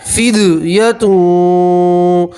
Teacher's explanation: दाल के ऊपर जज़्म हो दाल में कलकला करते, फिद फिद आवाज़ 2 मरतबा सुनाई देंगी।